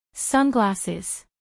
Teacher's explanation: a pronunciar en inglés por hablantes nativos sunglasses tres sílabas sunglasses acentuación en la primera sílaba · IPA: ˈsʌnˌglæsɪz